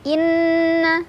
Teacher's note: ada gunnah musyaddadah karena ada nun yang bertasydid. Cara bacanya didengungkan.